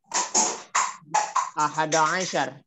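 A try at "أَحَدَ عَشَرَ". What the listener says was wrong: Kasih harokat yang lengkap sempurna. Ahada asyara.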